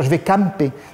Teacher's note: Il n'y a même pas de nasal, c'est-à-dire que c'est une fausse nasale.